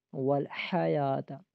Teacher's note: آگے حیات، ہا متحرک ہے، اس کو کھینچنا نہیں ہے، اور ہا کو گلے کے درمیان والے حصے سے ادا کریں گے